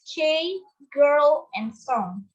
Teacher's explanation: velars, formed by putting the back part of the tongue against the soft palate